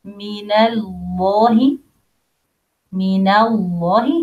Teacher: Here a lam heavy because preceded by fatha.